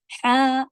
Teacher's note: یہ ہا جو ہے وہ حلق کے بیچ سے ہوگا